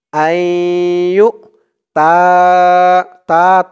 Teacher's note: তা তিন আলিফ টান মধ্যে মুনফাসিল